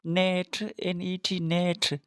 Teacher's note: N is alveolar nasal sound.